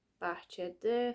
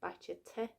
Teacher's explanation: we have the locative suffix, which then now is in its original form. We didn't need to make it unvoiced. We didn't need to say bahçete because there's no need, because the word ends in a vowel.